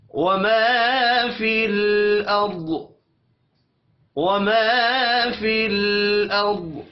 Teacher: रॉ को मोटा पढ़ेंगे और दौत साकिन बन जाएगा, दौत को मोटा भी पढ़ेंगे